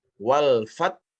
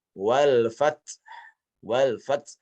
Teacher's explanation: Pendapat pertama yang paling rajih, yang kami pakai adalah dengan tidak mengeluarkan hamas pada ta.